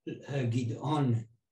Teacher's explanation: The emphasis on the second syllable